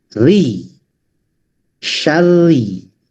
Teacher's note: Setiap ro tasdid berharkat kasroh maka dibaca tarkik atau tipis gitu.